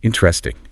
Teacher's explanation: But in real-world application, the second syllable is completely elided. Exactly. It becomes 3 syllables.